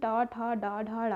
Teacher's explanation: टा वर्ग में मूर्धन्य, टा वर्ग जो होता है वो मूर्धन्य के आधार पर उच्चरित होता है, उसमें टा, ठा, डा, ढा, ड़ा हो जाता है।